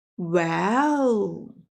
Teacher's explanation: The third tone, falling down and then rising up, like, well. A thinking sound.